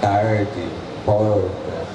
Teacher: Esse R que a gente fala aqui no interior, principalmente aqui no Vale do Paraíba, que é o R retroflex, tarde, porta, é o mesmo R do inglês.